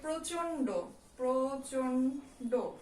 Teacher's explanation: নটাকে কিন্তু নাক দিয়ে যেহেতু উচ্চারণ করা হয় তাই এটাকে নাসিক্য বর্ণ বলা হয় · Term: যুক্ত নাসিক্য বর্ণটি